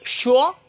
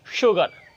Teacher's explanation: এই এস এর উচ্চারণ ইংরেজিতে দুটি ওয়ার্ডের ক্ষেত্রে তালিব্যস্যে রূপান্তর করতে হবে